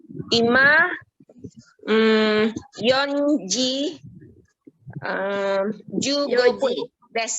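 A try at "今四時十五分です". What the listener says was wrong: Yoji. Ya, bukan Yonji tapi Yoji.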